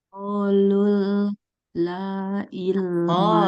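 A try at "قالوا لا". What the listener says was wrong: Qalu la satu-satu. Lu satu, la satu. qalul la, nggak boleh tasydid, nggak boleh digabung. Dia beda. Qalula. Qalula.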